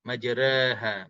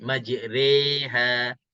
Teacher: Sebab di sana ada imalah sughra ataupun dengan makna taqlil. Taqlil, baca baris cenderung juga, tapi dia cenderung ke baris atas lebih. Dia nak cenderung ke bawah dah, tapi dia lebih kepada atas.